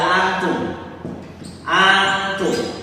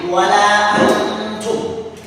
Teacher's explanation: Ada nun mati di sini bertemu dengan tak, maka nunnya tidak dibaca tapi disamarkan ke tak. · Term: ikhfa